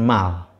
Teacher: syllable Mal terdiri dari konsonan nasal bilabial me kemudian vokal a.dan konsumen lateral lele Jadi disini sudah terjawab